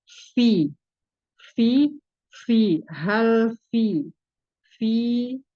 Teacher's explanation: Jadi dialirkan karena huruf fa ini mempunyai sifat hamas dan rohah, mengalir suara dan mengalir udara.